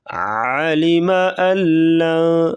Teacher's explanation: حمزہ کو لام کے ساتھ ملائیں گے درمیان میں جو نون ہے اس کو نہیں پڑھیں گے